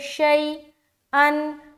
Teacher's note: شی، یا ساکن سے پہلے زبر ہے، یا لین ہوگی، یا لین کو نرم آواز کے ساتھ جلد اور معروف پڑھیں گے